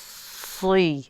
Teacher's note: although it's a kasra, it's still a heavy letter, so we still have to say the sad as heavy as we can.